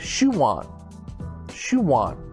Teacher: sounds like we're adding a w